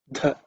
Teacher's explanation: so it has to be aspirated with extra air